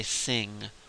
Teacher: most dialects of English will just say sing without a G on the end of it